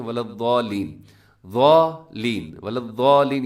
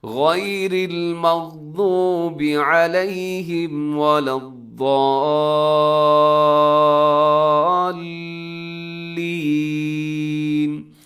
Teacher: اپنے ضاد کو آگے لام کے ساتھ ضرور ملانا ہے، کیونکہ لام کے اوپر آپ کو تشدید بھی نظر آ رہی ہے، تو آپ نے ایسے ملانا ہے کہ اپنے ایک سیکنڈ کے لیے رکنا بھی ہے اس کے اوپر، تاکہ یہ پتہ چل جائے کہ آپ نے جزم پر نہیں آپ نے ملایا، بلکہ آپ نے تشدید کے ذریعے سے اگلے لفظ کے ساتھ ملایا ہے، حرف کے ساتھ۔